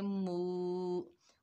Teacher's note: मीम के ऊपर पेश है, आगे वाव साकिन है, मीम को वाव साकिन से मिलाएंगे, ये वाव मद्दा है, एक अलिफ की मिकदार खींच कर पढ़ेंगे